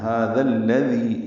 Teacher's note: ہیں، لیکن ہا پر کھڑا زبر دو حرکات لمبا ہے، اور ذال کو الذی کے لام سے ملانا ہے ، هذا الذی، اب دونوں ذال نرمی سے پڑھیں گے، الذی